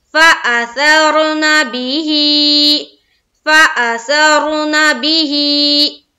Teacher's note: ही को खड़ी जेर की हरकत के साथ एक अलिफ के बकदर खींचेंगे, जिस तरह मैं और आप या मद्दा को पढ़ते हैं, यानी कि हा खड़ी जेर ही।